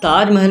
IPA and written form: taːdʒ ˈmɛːɦ(ə)l (Taj Mahal)